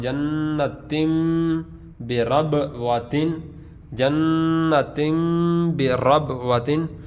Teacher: برب واتن میں را کو پر پڑھیں گے